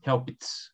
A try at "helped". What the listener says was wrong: Não tem I. Não tem I, né?